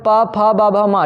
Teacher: तो ओष्ठ होता है, ठीक है। बिना दोनों ओष्ठ सटाए आप इसको नहीं बोल सकते हो